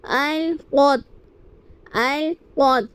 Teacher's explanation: قاف کو پر یعنی موٹا پڑھیں گے کیونکہ قاف حروف مستعلیہ میں سے ہیں